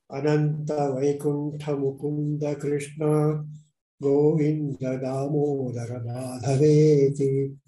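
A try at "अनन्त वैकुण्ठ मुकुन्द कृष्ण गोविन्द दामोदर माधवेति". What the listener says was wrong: Uttama, very nice.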